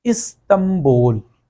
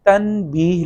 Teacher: اگر نون کے بعد با آ جائے گا تو نون کی بجائے میم کی آواز نکالی جائے گی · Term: اقلاب